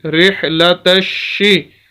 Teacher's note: تا کو ہم نے ڈائریکٹ شین کے ساتھ ملا دیا ، وجہ اس کی یہ ہے کہ یہ دونوں لفظ خالی